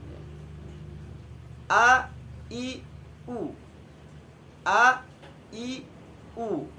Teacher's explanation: ketika pengucapan hamzah dan huruf ha itu tidak boleh ada suara hidung karena dia hurufnya di tenggorokan